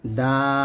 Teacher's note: জিহ্বার আগা সামনের উপরে দুই দাঁতের গোড়ার সঙ্গে লাগিয়ে উচ্চারণ করবেন